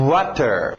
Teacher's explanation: Esse é um semivogal, saindo dos lábios para fora.